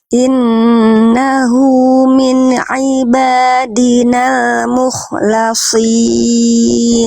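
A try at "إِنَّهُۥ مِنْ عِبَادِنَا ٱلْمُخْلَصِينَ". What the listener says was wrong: Jelaskan kho-nya sedikit lagi, ya. Innahu min ibadinal mukhlasin. Jadi kho-nya kurang neken di makhrajnya mukhlasin. Jadi biar nggak cuma lewat si bunyi kho-nya.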